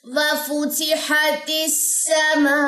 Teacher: میم کے اوپر جو بڑی مد ہے مد متصل ہے، اور اس مد کو آپ نے 4 سے 5 سیکنڈ لمبا کرنا ہے